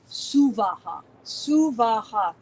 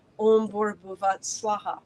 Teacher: Suvaha, 3 equal separate syllables.